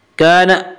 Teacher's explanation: واستکبر وکان، کان الف مدہ، الف ہمیشہ مدہ ہوتا ہے، الف سے پہلے زبر ہوتا ہے، الف مدہ کو ایک الف کے برابر کھینچ کر پڑھیں گے